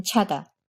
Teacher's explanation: made in a similar way to ch in english except your tongue is much closer to the roof of your mouth